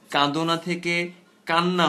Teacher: কাঁদনা থেকে হয়ে গেল কান্না, কারণ এই না এর সঙ্গে মিলে দ হয়ে গেল ন। শব্দ মধ্যস্থ দুটো ভিন্ন ধ্বনি যখন একে অপরের প্রভাবে এভাবে পরিবর্তিত হয়, তখন আমরা তাকে বলে থাকি সমীভবন।